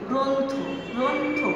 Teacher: এই র ফলা এবং অ, এই অটি আমি এখানে ওকার দিয়ে উচ্চারণ করছি।